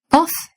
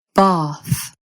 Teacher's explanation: RP uses vowel length much more noticeably than in general American. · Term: extra long